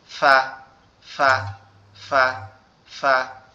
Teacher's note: সামনের উপরে 2 দাঁত, নিচের ঠোঁটের পেটের সঙ্গে লাগবে, লেগে উচ্চারিত হবে ফা ফা ফা ফা। ঠিক আছে, সামনের উপরে 2 দাঁত, নিচের ঠোঁটের পেটের সঙ্গে লাগবে, নিচের ঠোঁটের পেটের সঙ্গে লাগবে, লেগে উচ্চারিত হবে ফা ফা ফা ফা, এভাবে।